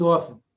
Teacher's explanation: we hate listening to people who prove that they know how to spell by pronouncing letters that shouldn't be pronounced like the t in often it's not off tin it's often same thing with salmon it's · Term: silent letters